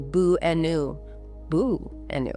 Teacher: The first and last A become the lazy schwa sound.